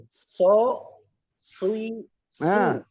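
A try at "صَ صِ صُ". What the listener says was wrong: Masih pakai bibir itu sui, soi. Nah, lihat bibir saya diam nih. Soi, soi, soi.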